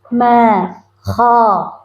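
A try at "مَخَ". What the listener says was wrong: Nah, kho-nya kurang. Kho. kha, bukan kha. Kho.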